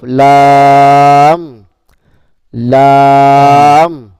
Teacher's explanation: জিহ্বার আগার কিনারা সামনে উপরের মাড়ির, উপরের দাঁতের মাড়ির সঙ্গে লাগিয়ে, উপরের দাঁতের মাড়ির সঙ্গে লাগিয়ে উচ্চারিত হয় একটি হরফ লাম,